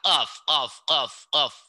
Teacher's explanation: Bunyiin huruf K, tapi ada di tenggorokan.